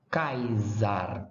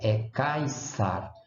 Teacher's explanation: O S é sibilante surda em latim.